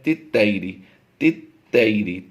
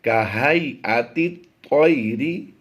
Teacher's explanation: یہ تا نہیں تو کی آواز آنی چاہیے۔ یہ حروف مستعلیہ سے ہے، حروف مستعلیہ ہمیشہ پر پڑے جاتے ہیں۔